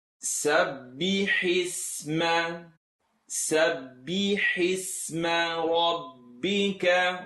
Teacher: Ba shadda, ha kasra, hi. I want the hi sound from the throat.